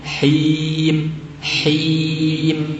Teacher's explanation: Baru saat mim nutup baru masuk ke hidung.